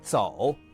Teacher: Native speakers keeps it low, creaky, cut short in a sentence. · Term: third tone